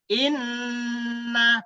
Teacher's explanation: suara ditekan ditahan dua harokat dan berdengung karena tasjid ini hakekatnya adalah dua huruf dua huruf hakekatnya ya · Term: bacaan ghunnah